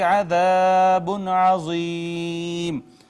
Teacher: نون تنوین پہ اظہار ہوگا اس وجہ سے کہ بعد میں حرف اظہار عین آ گیا ہے، یا کا ما قبل مکسور، یا مدہ، اور اس کے بعد سکون عارضی لہٰذا یہاں پہ مد عارض ہوگی۔